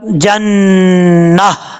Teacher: जब स्टॉप करेंगे तो ता गोलता है, इसको हा से बदल देंगे वक्फ करते वक्त, जन्ना, इस तरीके से पढ़ा जाएगा। यानी जब वक्फ करेंगे तो आखिर में हा का साउंड आएगा, हा की आवाज आएगी, और वक्फ नहीं करना चाहते तो ता के नीचे जो जेर है वो पड़ी जाएगी।